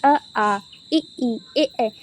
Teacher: कोई भी हमारा गोलाकार नहीं बना रहा है, तो ये हमारा क्या हो जाएगा, अवृत्तिमुखी